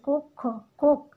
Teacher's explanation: কর উচ্চারণটা এখানে কিন্তু ওকার হয়ে যাচ্ছে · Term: সংবৃত